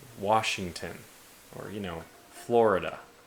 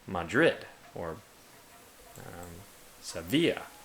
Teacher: usually in the Hispanic way, or Spanish, or Romantic languages, I mean, I know this mostly from Spain, it's usually on the second syllable. So, Madrid, or Sevilla, second syllable.